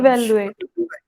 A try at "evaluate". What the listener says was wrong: Evaluate. Evaluate is the correct pronunciation. I said evaluate so that you can hear the E correctly.